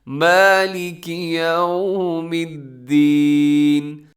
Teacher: یہ میم کو تھوڑا سا آپ نے لمبا کرنا ہے